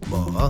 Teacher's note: tone 3 starts mid, dips and then rises